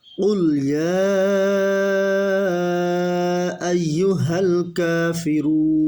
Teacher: 4 নম্বর মাখরাজ জিহ্বার গোড়া তার বরাবর উপরে তালুর সঙ্গে লাগিয়ে 2 নুকতাওয়ালা কফ